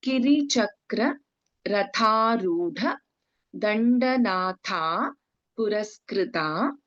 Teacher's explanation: In Ratha, again Tha is Mahaprana. Rudha, Dha is Mahaprana. Dandanatha, Tha is Mahaprana. · ದಂಡನಾಥ ಪುರಸ್ಕೃತ ಕಿರಿಚಕ್ರಾರೂಢ ದಂಡನಾಥ ಪುರಸ್ಕೃತ ಇನ್ ರಥ again ಥ ಇಸ್ ಮಹಾಪ್ರಾಣ ರೂಢ ಇಸ್ ಮಹಾಪ್ರಾಣ ದಂಡನಾಥ is ಮಹಾಪ್ರಾಣ